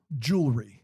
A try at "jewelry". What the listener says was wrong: You are adding a vowel. Jewelry is not right. There's no there. It's jewel dash re. Yes, elry. Yeah, that's not what it is. It's jewelry. You can say jewelry or you can say jewelry. You can't say jewelry.